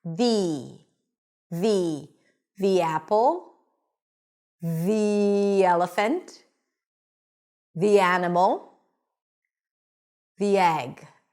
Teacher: When the following word starts with a vowel, we pronounce it with an e sound.